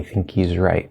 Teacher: of course we also have that glottal stop at the end of the word right